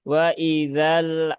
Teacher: lam itu dia sifatnya tawasud ya dia tidak syidah maka ketika dalam kondisi sukun pun dia tidak ditekan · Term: lam sukun